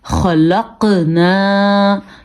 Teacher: قاف پہ قلقلہ کیا کیونکہ قاف کتب جد میں شامل ہے اور قاف حروف مستعلیہ میں سے بھی ہے، اس لیے ہم نے ان دونوں کو پر بھی پڑھا.